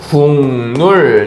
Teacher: 기역과 리을이 만났을 때 서로에게 영향을 줘서 기역은 이응으로 바뀌었고요. 리을은 니은으로 바뀌었습니다. 아시겠어요? 자, 그럼 결국에 이 기역은 파열음, 리을은 유음인데 각각 이응, 니은인 비음으로 교체되었다라고 볼 수가 있겠지. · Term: 비음화